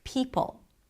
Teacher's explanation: the high E and the aspirated sound at the beginning, P, is compromised. So you're not fully exploring the vowel at the beginning.